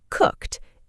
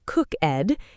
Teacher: It is not cook-ed. It is just one syllable with a T sound at the end.